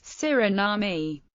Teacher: with the main stress on the third syllable and a schwa terminal vowel